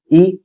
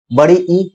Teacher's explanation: इ तालव्य से बड़ी ई तालव्य से